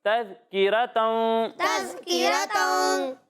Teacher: दाल में सीटी की आवाज़ नहीं आनी चाहिए